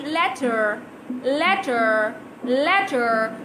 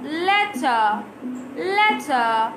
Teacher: in british english you will not hear the r sound because the e r sound is replaced by a very simple sound